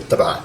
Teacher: normally if I just said taba, you don't actually hear the T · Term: tamarbuta